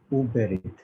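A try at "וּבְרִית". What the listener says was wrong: Uverit. Dagesh Lene will be omitted. Remember, Dagesh Lene, first root letter will be omitted. It will become Uverit.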